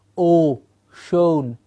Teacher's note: Rounded means the entire mouth becomes round. The entire sound is a round sound. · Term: rounded vowels